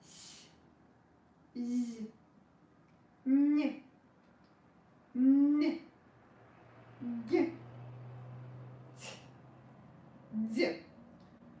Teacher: i pronounced all the soft consonants with wide tongue